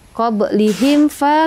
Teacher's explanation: Mim mati bertemu dengan fa itu izhar syafawi. Baca jelas aja.